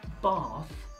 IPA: bɑːθ